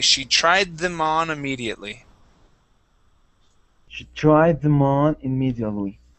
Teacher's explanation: a D and a TH, especially the voiced TH, are very similar. Okay, so we actually combine these two words. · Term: combine sounds